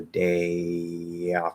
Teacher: But if you go all the way up into a Y, if you say day off, that does not sound good at all. So at best, there's a small Y if you're linking to a vowel.